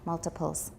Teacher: There's a consonant before the T, so it's not a tap